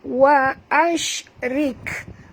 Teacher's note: Wa ashrik, bunyikan hamas pada kaf. Wa ashrik, jangan lantun pada kaf dia bukan huruf qalqalah.